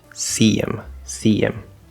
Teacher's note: we're dropping that h we're connecting through with the y the small y sound